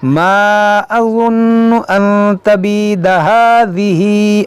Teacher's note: अज़ुन्नु नून में गुन्ना करेंगे